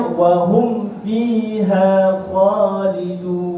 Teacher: Sebab mim mati bertemu dengan fa. Fa itu adalah huruf syafatan, huruf daripada bibir.